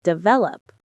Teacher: Develop, with the stress on vel.